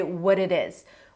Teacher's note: Normally in American English, you would say what it is. what it is in North American English where the T's are flap because everything is connected